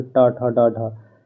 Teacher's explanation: हमें जीभ को मोड़ करके बोलना पड़ता है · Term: मूर्धन्य